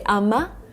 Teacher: Americans would say ama instead of I am